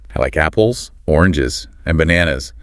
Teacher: Rise. Rise. Fall list.